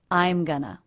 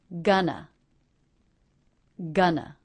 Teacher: the first syllable is stressed gun and the second syllable unstressed uh